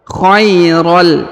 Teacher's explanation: Jadi bukan lagi khairon, tapi khairol, ya, langsung melebur ke huruf lam, lalu ditahan dan ditekannya.